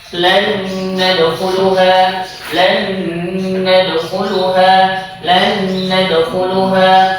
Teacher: Nun sukun bertemu dengan nun, maka dibaca dengan idgham bigunah.